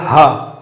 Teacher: जो उसका जोर है वो पड़ रहा है हमारे कंठ पे, यानी कि इसका उच्चारण होता है कंठ से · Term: काकल्य ध्वनि